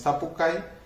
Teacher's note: el acento va sobre la A, y mientras que la I se pronuncia brevemente y además es átona. Entonces, sapucay, esta I acompaña a la letra A, la podemos identificar de esa manera. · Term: vocal I breve